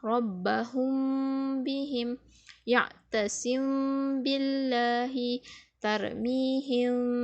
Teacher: bila kita membaca ikhfa syafawi ni pula, kita merapatkan bibir.